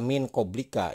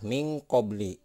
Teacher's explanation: Nah, ini tidak dibaca min koblika ya. Ini nun mati ketemu dengan huruf ikhfa di depannya, ini huruf kof, maka itu akan berbunyi eng ya.